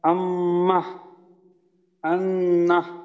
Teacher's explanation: নাকের বাঁশি হতে গুণনা করে পড়তে হয় আম্মাহ, আন্নাহ।